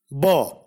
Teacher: Ba is a voiced bilabial plosive.